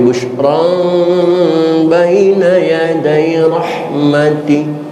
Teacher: Ada tanwin ketemu huruf ba, hukumnya iqlab. Namun membaca iqlab tidak menekankan kepada huruf ba sehingga timbul huruf mim 100%, suara mim 100%, tetapi ada ikhfa'nya. Bukan busyram tapi busyran baina yaday rahmati.